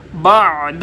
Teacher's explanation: बअद आइन गले के दरमियान से